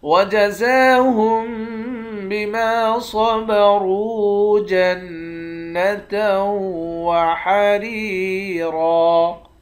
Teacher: صاد اور را ان دونوں حرف کو موٹا پڑھیں گے، واو کے ساتھ ملا کر ایک الف کی مقدار کھینچ کر پڑھیں گے۔ نون مشدد پر غنہ کریں گے، تا کو واو کے ساتھ ملا کر یہاں بھی ادغام مع الغنہ کریں گے، یعنی غنہ کے ساتھ پڑھیں گے۔ · زا کے اوپر کھڑا زبر ہے، ایک الف کی مقدار کھینچیں گے، میم پر غنہ کریں گے۔ صاد اور را ان دونوں حرف کو موٹا پڑھیں گے